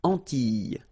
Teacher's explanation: So final S and E, really, you don't pronounce them. So you get this I, I sound.